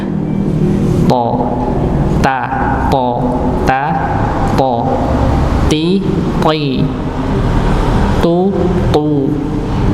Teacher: dengan lebih menebalkan huruf ta-nya, dengan mengangkat pangkal lidah